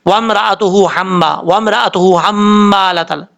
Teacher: बाज़ औक़ात लोग पढ़ते हैं वम्राअतुहू हम्मा, वम्राअतुहू हम्मालतल, ये बहुत बड़ी गलती है, बहुत बड़ी मिस्टेक कर जाते हैं। पहली हा तो पढ़ लेते हैं लेकिन दूसरी जो हा है वो हज़फ हो जाती है